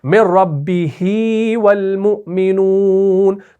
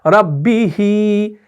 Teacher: تو یہاں پر آپ یا مدہ کھینچتے ہیں، ایک یا مدہ پیدا ہو جاتا ہے